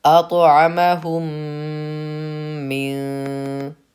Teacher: میم ساکن کے بعد میم آئے تو میم کو میم سے ملا کر غنہ کے ساتھ پڑھا جائے گا